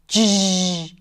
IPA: dʒ